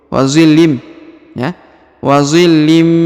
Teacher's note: didengungkan contohnya willim willim jadi ditahan dan ditekan dua harakat kemudian huruf linnya melebur ke huruf mimnya